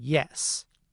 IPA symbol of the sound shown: j